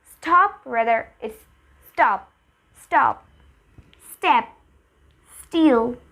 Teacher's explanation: ST is not aspirated S এর পরে যদি T থাকে তাহলে stop.